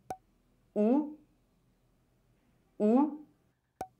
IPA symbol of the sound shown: w